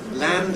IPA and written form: lænd (land)